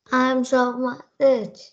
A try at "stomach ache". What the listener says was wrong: Oh, not H. Ache. Letter K sound. Ache. Good job.